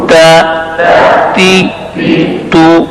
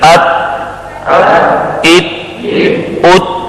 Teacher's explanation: इन तीनों हरफों को हुरूफ नितइया कहते हैं, इसलिए ये तालु के गार से अदा होते हैं।